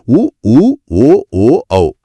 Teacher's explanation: இந்த 5 எழுத்துக்களை கூறும்போது நம்ம உதடுகள் தானாகவே வட்டமா ஆங்கில எழுத்து ஓ வடிவத்துல குவியும். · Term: இதழ்கள் குவியும் எழுத்துகள்